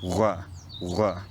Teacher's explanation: people pronounce the rhotic as a labialized uvular fricative, r, r. This was often paired with rhoticity, so people used this sound at the starts and ends of words and before consonants. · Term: Northumbrian Bur